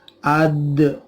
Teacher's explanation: dalnya dibaca atau dipantulkan qalqalah